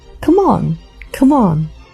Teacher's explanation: Instead of saying, come on, the O in come becomes a schwa, as the E at the end of come is silent. When the two words link together, it sounds like, come on, come on. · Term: connected speech